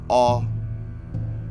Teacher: the mid back unrounded